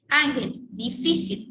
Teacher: Ángel, difícil, ya acá en difícil, esta es la última sílaba y esta es la penúltima sílaba y esta es la antepenúltima. Entonces, ahí está la mayor fuerza de voz, está en la penúltima sílaba, entonces se considera una palabra grave